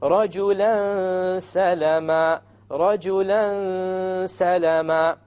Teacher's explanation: You have a tanween followed by a sin. So it will be ikhfa, and there will be a ghunnah. Now we said the ghunnah is the sound that comes from the nose.